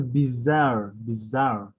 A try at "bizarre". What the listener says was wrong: Bizarre. Don't stress the bees, but